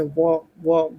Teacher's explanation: दंतोष से आता है ऊपर के दांत का प्लस निचला ओठ। ऊपर के दांत प्लस निचला ऊंट। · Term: दंतोष्ठ